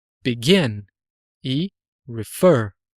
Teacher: Nos dois casos, é a última, gin e fer, né? Elas são as sílabas fortes, tônicas.